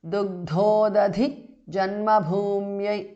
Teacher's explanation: Dugdhodadhi janmabhumyai is a compound word. Dugdha the second dha, udadhi second dha, and bhumi bha. All three are Mahapranah.